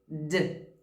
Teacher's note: Se você falar só assim, ó, t, t, t, a sua corda vocal não está vibrando. Mas se você falar o som da letra D, você vai perceber que a sua corda vocal vibra